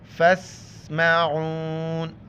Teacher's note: وقف کریں گے تو نون بھی آخر میں ساکن ہو جائے گا اور عین کو گلے زدہ کرنا ہے